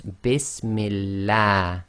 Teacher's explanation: Kasra before the name of Allah makes the Lam of Allah go tarqiq, i.e. light. So you have to say the A sound, not the R sound.